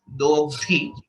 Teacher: A few places where it could have been better is the alpa prana and mahaprana difference. Basically, dogdhi, dha is mahaprana again